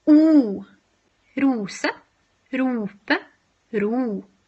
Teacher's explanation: So this is a close, back, protruded vowel. So that means that your tongue should be as close to the roof of your mouth as possible without creating any constrictions, and as far back as possible, again without creating any constrictions.